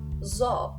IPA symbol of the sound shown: ɔ